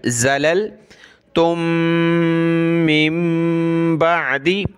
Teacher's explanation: दो मीम एक जगह जमा है, तो इस दोनों मीमों को प्लस करके एक मीम पढ़ी जाएगी और नाक में आवाज़ पैदा करेंगे।